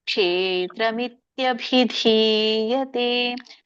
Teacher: ಭನು ಮಹಾಪ್ರಾಣ ಧನು ಮಹಾಪ್ರಾಣ ಭಿಧಿಯತೆ ದಿ ದೀರ್ಘ ಇರುವುದನ್ನ ಎಳಿಬೇಕು